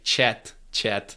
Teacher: Chat there's no [æ] because we don't have that. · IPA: [čet]